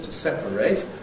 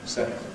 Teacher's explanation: So the verb has to remain as three syllables, “to separate” [ ˈsepəreɪt ], whereas the adjective can get you two syllables